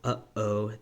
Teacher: there's a glottal stop that's called the glottal stop which is also a consonant in this language